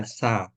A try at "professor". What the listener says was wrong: But our stress in that word is on the fair. No sha. Get your tongue. not sha. Pure sir. Just as if you're about to say son, you know?